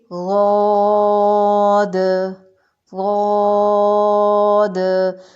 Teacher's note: زبان موٹی ہو کے سائڈ پر جا کر لگے گی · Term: موٹا حرف